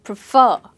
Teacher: The same way as refer, we say prefer. And the last syllable is stressed.